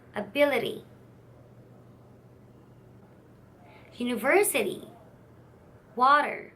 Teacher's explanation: the tongue reaches the roof of the mouth quickly